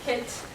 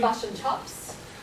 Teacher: new zealanders will say cut they have like a u type sound